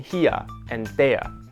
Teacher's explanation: we also keep some British English features that Brits have mostly dropped, like saying here and there in two syllables